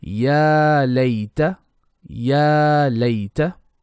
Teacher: We have mad asli on ya and Leen letter on lay. So ya is 2 beats, lay is 1 beat.